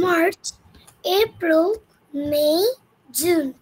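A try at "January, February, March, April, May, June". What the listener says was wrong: আরেকবার বলো, excellent, super, বলো, আবার বলো।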